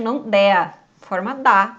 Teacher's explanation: E a mesma coisa no de baixo, não dea, forma da, ou seja, a gente perdeu o som do e que estava ali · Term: contração